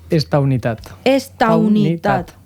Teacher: Es crea un diftong, au.